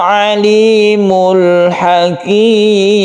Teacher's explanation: lam sukun lam ini disebut dengan izhar Qomariah yang artinya kita harus jelas membaca lamnya tersebut